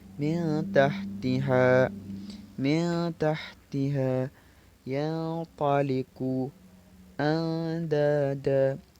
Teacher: Nah, ketika tingkatannya adalah ikhfa a'la maka lebih banyak bunyi ikhfa'nya atau bunyi samarnya daripada bunyi dengungnya